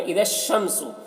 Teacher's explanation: جیسے یہاں پر جو مثالیں ہیں، اذا الشمس، تو یہاں پر دیکھیے اس الشمس میں الف لام دونوں ہیں، لیکن جب پیچھے والے حرف اس کو ملا کر پڑھ رہے ہیں اس سے، تو الف لام دونوں کو نہیں پڑھ رہے ہیں، ذال کو شین سے ملا کر پڑھ رہے ہیں، اور شین یہ حروف شمسی میں سے ہے۔